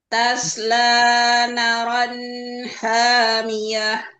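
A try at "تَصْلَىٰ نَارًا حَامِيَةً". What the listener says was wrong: Yuk, yang panjang harus dipanjang.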